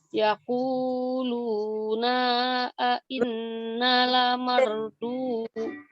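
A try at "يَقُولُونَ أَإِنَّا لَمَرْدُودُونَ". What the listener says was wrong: Yaquluna, naknya pendek. Pas luna, naknya pendek. Yaquluna a inna lamarduduna fil hafirah.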